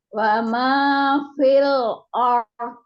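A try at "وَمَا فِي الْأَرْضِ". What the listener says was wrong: Hamzahnya berikan dulu. Ya, dipegang kuat-kuat dotnya. Dotnya itu benar-benar ditempelkan. Wa ma fi, diluruskan kasrohnya. Fil a.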